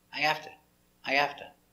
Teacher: Another pronunciation we have is where the H is silent